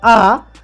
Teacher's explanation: যখন আমরা আ উচ্চারণ করি তখন কিন্তু আমাদের জিভটা একেবারে নিচের স্তরে নেমে আসে, সেটাই নিম্ন স্বরধ্বনি।